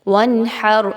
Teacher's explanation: اظہار کیسے ہوگا کہ آپ نے نون پہ بالکل بھی غنہ نہیں کرنا، ہا کو وسط حلق سے نکالیں گے اور را پر جب آپ وقف کریں گے تو اس را کو آپ نے پر پڑھنا ہے وقف کی صورت میں